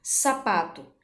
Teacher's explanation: o pá é a sílaba mais forte, de maior intensidade presente nesta palavra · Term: sílaba tônica